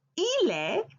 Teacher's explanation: Or I've been connecting the consonants L at the end of il to e. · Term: liaison